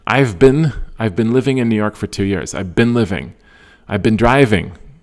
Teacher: The stress in that sentence is on been.